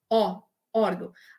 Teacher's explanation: Assim, ele não apareceu todo fechadinho, por conta daquilo que eu falei para vocês. Aqui é o O aberto, a gente não fala órgãos, a gente fala O, órgão.